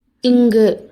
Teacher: காற்று வாய் வழியாக வராமல் மூக்கு வழியாக வெளியேறும். இது மூக்கொலி. · கடை அன்னத்தை வேற எப்படி சொல்லலாம்னா மென் அன்னம். நாக்கோட பின்பகுதி கடை அன்னத்தை தொடும். அதுதான் கடை அன்ன ஒலி.